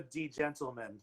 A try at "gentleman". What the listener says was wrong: We get that one, though it's a gentleman. The D is silent.